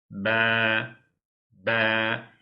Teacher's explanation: Bu harfin B harfini telaffuz ederken dudaklarımız eee birbirine hafiften eee yani ufak bir sertlikle çarpacak. Sonra bırakıyoruz.